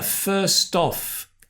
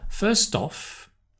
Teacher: there's a linking first-off with a /d/ not a /t/ but a /d/